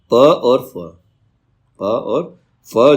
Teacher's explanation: प और फ जो है वो अघोष ध्वनि है